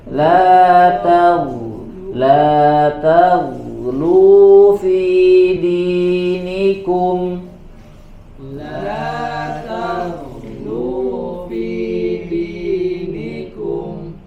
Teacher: Sini hati-hati juga, la ta-nya tipis, ghainnya tebal.